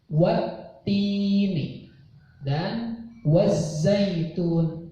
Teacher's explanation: maka alnya tidak terbaca jelas, tidak terbaca, dan pembacaannya langsung kepada huruf alif lam syamsiyah yang disertai tasydid